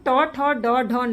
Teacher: फिर जब हम ट, ठ, ड, ढ, न बोलते हैं तो इसका उच्चारण हम मूर्धा से करते हैं।